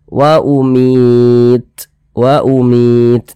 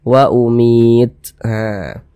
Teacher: huruf ta itu dia sukun kita baca seperti itu wa umitah jadi ada nafas yang mengalir tapi seperti memercik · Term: sifat hams